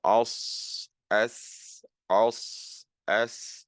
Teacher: So the difference between these two letters is not in terms of their point of articulation. Both the Sad and the Sin come from pretty much the same point of articulation in your mouth.